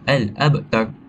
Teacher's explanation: huruf ba iaitu huruf qalqalah, kita patut membuat baca dengan pantulan ringan. Al-abtar.